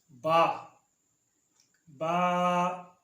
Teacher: با ادا ہوتی ہے بند ہونٹوں کے گیلے حصے سے